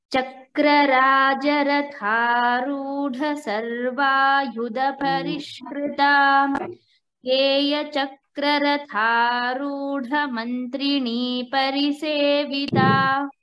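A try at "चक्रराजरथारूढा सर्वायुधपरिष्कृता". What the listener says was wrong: Uttamam Bhagini, we'll chant it.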